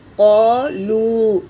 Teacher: یہاں پر الف مدہ ہے اور یہ واو مدہ ہے، دونوں کو ایک الف کی مقدار کھینچ کر پڑھیں گے